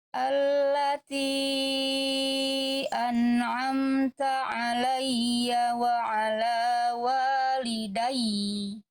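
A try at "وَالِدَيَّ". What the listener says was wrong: Tapi terlalu panjang. Walidai. Jangan dipanjangin. Cukup ditekan beres.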